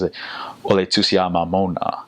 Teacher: And so they it's almost like they open their mouths a little bit wider when they're pronouncing the A's and O's